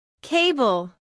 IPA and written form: ˈkeɪbəl (Cable)